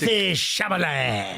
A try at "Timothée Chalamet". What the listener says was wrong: Wait, I don't think you're saying the name right. What are you saying? Yeah, I think you had your consonants reversed. You said Chalamet. I think it's Chalamet.